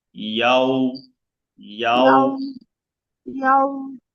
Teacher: ওয়াওটা পড়ার সময় মুখটা গোল হবে